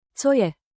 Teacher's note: Let the intonation rise on both words. Co je? 2 gentle steps up.